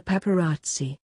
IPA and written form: papəˈratsi (paparazzi)